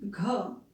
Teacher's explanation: घ बोलने में ही एक घर्षण आता है